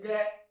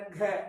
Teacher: खराश वगैरह जैसे उच्चारण करेंगे, क साधारण है, कोई खास नहीं, ख तो हवा ज्यादा निकल रही है, ग साधारण है, घ हवा ज्यादा निकल रही है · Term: महाप्राण